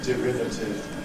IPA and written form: dɪˈrɪvətɪv (derivative)